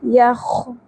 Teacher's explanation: خو پر حرف ہے اور کھردرا پن بھی ہے خراش کے ساتھ